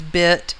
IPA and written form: bIt (bit)